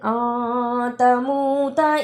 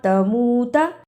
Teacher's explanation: تموت اخفا ادا کرنے کا طریقہ، نون ساکن کی آواز کو تھوڑی دیر ناک میں چھپا کر غنہ کرنا ہے